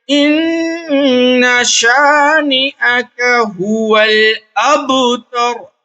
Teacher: نون اور میم پر تشدید ہو تو غنہ کریں گے، ناک میں تھوڑی دیر آواز کو چھپا کر پڑھنے غنہ کہتے ہیں